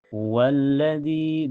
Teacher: Karena ada ya sukun sebelumnya harakat kasrah dibaca panjang dua harakat. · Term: mad thobi'i